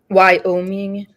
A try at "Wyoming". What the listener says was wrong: It's why? Oh, it sounds like you're asking a question.